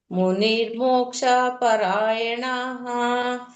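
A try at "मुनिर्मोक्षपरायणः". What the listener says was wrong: ಎರಡನೇ ಲೈನು ದೀರ್ಘ ಇಲ್ಲ. ಮುನಿರ್ಮೋಕ್ಷ ಪರಾಯಣಃ.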